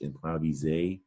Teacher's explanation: that S is pronounced as a Z in French